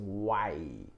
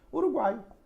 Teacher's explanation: o tritongo é semivogal, vogal e semivogal